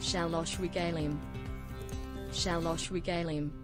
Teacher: okay so he meant the r is in german okay um probably a little bit more throat it's not the rolling r but a little bit more like g